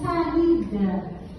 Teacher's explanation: O I está ali, folgadamente, sozinho na sílaba, soberano na condição de vogal.